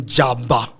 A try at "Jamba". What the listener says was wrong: I don't know whe I'm pronouncing it right, but it's there's an M. Jamba, I think.